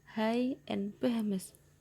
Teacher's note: Say this word and notice how you are not actually constricting or blocking airflow for these sounds. You are just exhaling a little bit harder than you would for a normal vowel sound in transition to the following vowel sound. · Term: glottal